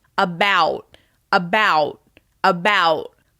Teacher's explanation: my mouth is moving to the w shape at the end of that vowel sound